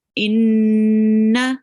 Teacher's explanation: we make a nasal sound and we prolong it